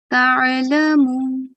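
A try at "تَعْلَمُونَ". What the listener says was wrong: Prolong the vowel mad. Ta'lamun.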